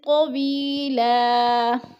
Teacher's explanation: کر پڑھیں گے۔ طویلا، طوی پہ جو ہے یہ مدہ ہے، یا مدہ کو ہم نے ایک الف دو حرکات کے برابر کھینچ کر پڑھنا ہے · نیچے زیر ہے تو یا مدہ، اور لام دو زبر لن، وقف کی صورت میں تنوین کو ایک زبر میں بدل کر پڑھیں گے